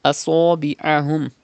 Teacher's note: You have to read sod with thicker voice because it is from mustalia letters.